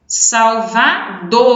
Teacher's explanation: O dor é o mais forte